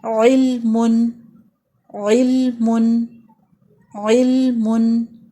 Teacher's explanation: ال کر کے اس کو نہیں چھوڑیں گے بلکہ لام کو ساکن کریں گے۔ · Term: لام ساکن